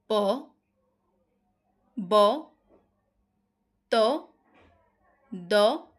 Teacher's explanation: যেসব ধ্বনি উচ্চারণের সময় ফুসফুস থেকে নির্গত বায়ু প্রবাহের মাত্রা অপেক্ষাকৃত কম সেগুলোকে বলা হয় অল্পপ্রাণ ধ্বনি।